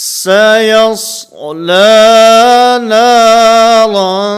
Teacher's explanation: سین میں آواز کو باریک اور صاد کے اندر آواز کو پر کرنا ہے. سیس لا لا نہیں لا، اس میں امالہ کی طرف نہیں جانا، جھکاؤ نہیں آنا چاہیے.